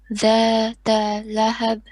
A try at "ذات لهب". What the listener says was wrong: Don't stretch that ta. You said that. No. That lahab.